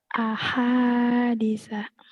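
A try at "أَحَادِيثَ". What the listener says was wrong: Ahadi panjang dinya juga. Sanya pendek. Ahadisa. Sanya pendek. Ahadisa.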